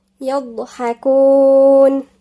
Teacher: مفخمة ومن عند الأضراس، مخرج الأضراس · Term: الضاد